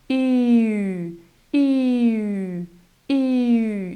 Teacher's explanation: It's basically an ie sound but then with rounded lips. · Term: uu sound